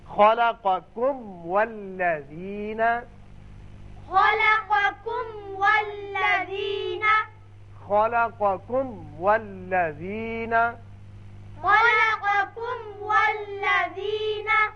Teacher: میم کا اچھی طرح اظہار کیجئے، پھر واو پر ہونٹ کو گول کیجئے، اس لیے واو ادا ہوگا۔